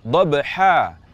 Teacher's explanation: Ketika kita waqaf pada kata dhabhan, maka kita baca menjadi dhabha, menjadi mad iwad dengan panjang 2 harakat